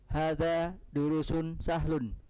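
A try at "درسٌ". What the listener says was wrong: Nah, kalau antum bilang durus, berarti setelah ra ada waw. Panjang jadi ya, durus. Ada waw tidak setelah ra? Durusun itu kalau setelah ra ada wawunya. Nah, berarti bukan durus.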